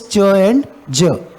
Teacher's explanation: complete closure followed by gradual release